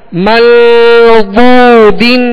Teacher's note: ضاد کو پر پڑھیں گے، ضاد حروف مستعلیہ میں سے